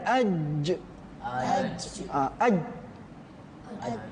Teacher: Jim tengah lidah bertemu dengan langit atas.